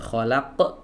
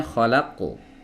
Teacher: Harusnya kholaqu. Nah, jadi pantulannya itu tidak boleh diiringi dengan menutup pita suara. Karena kalau langsung ditutup kholaq, terputus suaranya begitu saja, ini rawan akan muncul hamzah yang sukun.